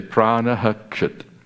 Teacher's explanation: Now pranaha, there's a rule that says when the akara, when a plus visarga plus the ksha, it's a more general rule, but it's usually just this one context. When the visarga is followed in a certain context, followed by the ksha of kshut, you have to pronounce the whole visarga. So that's why, even though it adds another syllable to the meter, you say pranaha kshut.